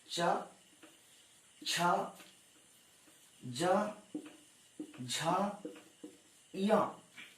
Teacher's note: ये पांचों व्यंजन तालु से बोले जाने वाले व्यंजन हैं